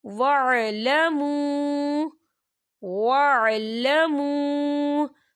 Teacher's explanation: علیکم واتقوا اللہ واتقوا اللہ واعلموا واعلموا، یہ دیکھیں واعلموا، یہاں واو ساکن ہے، واو ساکن سے پہلے پیش ہے، تو یہاں پر واو مدہ ہو رہا ہے اور اس پر چھوٹی سی مد بھی آپ کو نظر آ رہی ہے، تو ہم اسے 4 حرکت کے برابر کھینچ کے پڑھیں گے.